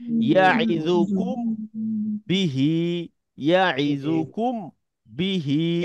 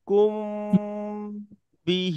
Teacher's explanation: মিম সাকিনের পরে যদি মিম সাকিনের পরে যদি বা আসে শুধু একটি অক্ষর বা আসে তাহলে এই মিম সাকিনকে গুন্নার সাথে গোপন করে পড়তে হয়। এটাকে মিম সাকিনের ইকফা বলা হয়।